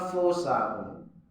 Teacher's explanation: Jadi kesempurnaan samar dan dengungnya itu pada huruf fa. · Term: ikhfa